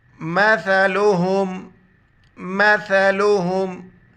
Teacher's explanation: سا کے لیے وقت زبان باہر نکالیں گے